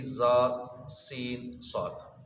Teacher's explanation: 3 حروف ہیں جس پر سیٹی کی آواز نکلے گی، زا، سین، صاد، ان کو حروف صفیریہ بھی کہتے ہیں۔